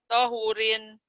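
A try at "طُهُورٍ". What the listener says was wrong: Tohurin panjang.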